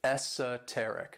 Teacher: this word has 4 syllables, and the stress is on that third syllable